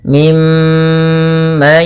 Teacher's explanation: suara mnya ditahan ya teman-teman jangan hanya lepas saja tapi tahan dulu dua harakat baru dilepas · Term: gunah, gunnah